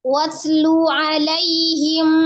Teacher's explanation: Walaupun dia sama-sama sidda dengan huruf qalqalah. Jadi jangan dipantulkan watlu, tapi dialhamskan saja. Watlu alaihim.